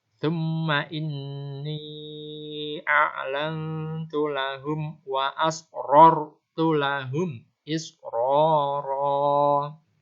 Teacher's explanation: Ini ro-nya dibaca tafkhim, dibaca gemuk atau dibaca tebal.